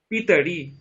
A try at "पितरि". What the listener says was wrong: ওখানে তো যেরকম পিত্রহ যেরকম রয়েছে, ওখানে তয়ের পরে দেখুন কোনো তো মানে আপনার কোনো মানে হলন্ত চিহ্ন কিছু নেই, সেই জন্য ও তয়ের পরে যে অকারটা ওটা পুরোটা উচ্চারণ করতে হবে, পিতৃ নয়, পিতরি। তটা পুরোটা বলতে হবে।